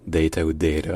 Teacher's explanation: avec une diphtongue dans la première syllabe